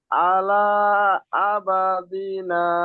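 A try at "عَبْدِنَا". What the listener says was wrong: আবা নাই, আব দিনা।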